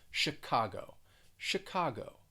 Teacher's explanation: the ch you're going to pronounce it kind of like an sh it's not a ch sound it's a shh sound and the stress is on that second syllable chicago chicago let's